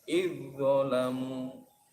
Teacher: Ini juga dibaca idgham jinsi. Idzalamu, zal mati bertemu dha, zalnya dimasukkan huruf dha. Jadi bacanya idzalamu.